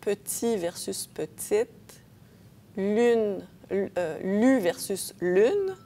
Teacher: le relâchement des voyelles haute en syllabes fermé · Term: relâchement des voyelles hautes